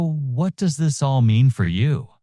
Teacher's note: Rising intonation, inviting internal reflection.